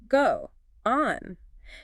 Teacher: You have to do a little glottle stop in your throat. You have to physically close your vocal cords.